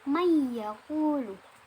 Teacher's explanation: Nun matinya di sini dibaca sebagai ya, karena nun mati di sini kan man yaqulu, nun mati bertemu dengan ya, sehingga dimasukkan kepada huruf sesudahnya yaitu ya, sehingga dibaca may yaqulu dengan mendengung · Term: idgham bi gunnah